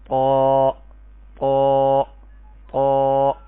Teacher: زبان کی جڑ کو ذرا ابھار کر جب آپ پڑھنے کی کوشش کریں گے تو قا بالکل پر ہو کے جو ہے اس کی آواز آئے گی. اب میں آپ کو پڑھ کے سناتا ہوں تا تا تا قا قا قا.